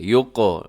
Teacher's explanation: قاف موٹا بھی پڑا جائے گا، اور ساتھ اس کے بلو کلر بھی نظر آ رہا ہے، اس کا مطلب آپ نے قلقلہ بھی کرنا ہے